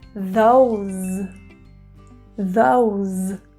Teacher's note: keep the z sound short